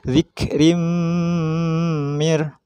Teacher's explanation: tanwin bertemu mim masuk suaranya tanwin ke mim